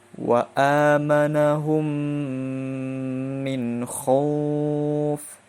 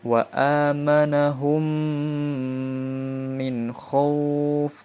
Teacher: ada idgham mimi. Sama dengan dengung 2 harokat. Hurufnya ada 1 yaitu mim.